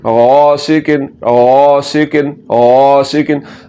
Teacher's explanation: غین کو آپ نے پر کر کے پڑھنا ہے، یعنی کہ موٹا کر کے پڑھنا ہے